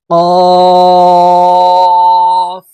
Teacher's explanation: জিহ্বার গোড়া থেকে কফ হরফের উচ্চারণ হবে।